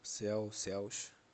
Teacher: esse céu ele é um ditongo aberto e pela regra se acentua se acentua os ditongos abertos e eli seguidos ou não de s.